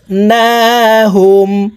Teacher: গুন্না হরকতের বামে মিমের উপরে তাসদি আছে তাই এই সাশদ ওয়ালা মিমের সাথে নাকের বাঁশি থেকে তিন সেকেন্ড পরিমাণ গুন্না করে ধরে রেখে পড়তে হবে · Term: ওয়াজিব গুন্না